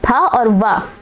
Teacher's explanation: ओष्ठ पा वर्ग का ओष्ठ कहलाएगा, और दंतोष्ठ व आपका दंतोष्ठ कहलाता है। फ और व ये आपके दंतोष्ठ होते हैं।